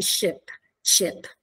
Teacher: i la e inglese quella di Ship Ship eccetera si posiziona oltre a essere un pochino più centrale si posiziona tra la I e la e